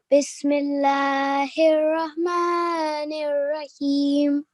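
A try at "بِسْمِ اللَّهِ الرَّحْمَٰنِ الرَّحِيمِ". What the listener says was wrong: Excellent, well done.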